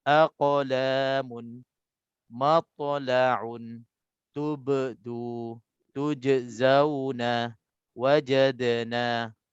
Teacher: untuk qalqalah sughranya kita sebut secara sederhana saja, tak boleh kita lebih sampai bunyi separuh baris ataupun macam berbaris huruf qalqalah ini. Kita sederhana dan jangan kita tekan sangat.